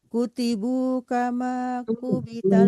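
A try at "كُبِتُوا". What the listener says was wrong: bukan kutibu tapi kubitu.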